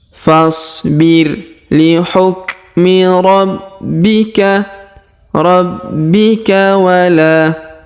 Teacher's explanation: Perhatikan huruf B berharokat tasdid, maka kita tahan dan kita tekan.